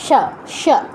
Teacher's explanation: তালব্য স, মানে এদের উচ্চারণ তালুতে